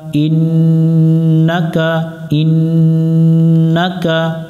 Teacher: এখানেও নুনের উপরে তাসদিদ, গুণনা করা ওয়াজিব